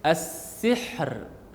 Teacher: Ra tu dibunyikan, walaupun di hujung bila kita waqaf kena bunyikan sifat ra tu, ra, tapi ra tu dibunyikan dengan sifat nipis, as-sihr, bukan as-sihr atau tebal.